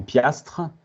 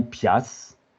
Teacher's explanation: ils ont perdu le tre parce que là trois consonnes de suite ça fait pas partie des des des des constructions que les